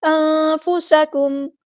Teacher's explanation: نون ساکن کے آواز کو ہم چھپا دیں گے. اخفا اور سین کی سیٹی ہم نے واضح کرنی ہے.